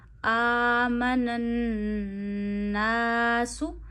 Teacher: اچھا، نون پہ تشدید ہے، نون کی آواز ناک میں لے جائیے، ایک انگلی جتنی ٹھہرائیے، منن، من الناس۔ الف سے پیچھے پھر زبر آئی، الف مدہ ہوا، الف کو کھینچیے ایک انگلی جتنا